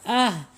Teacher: kita ucapkan Ah pasti dia akan mengalir napasnya karena mempunyai sifat alhams alhams ya ha sama ya mempunyai sifat alhams Dal ya ini